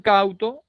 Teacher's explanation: primero será la vocal abierta como en cauto, en la A, y luego la vocal cerrada en la U. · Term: diptongo descendente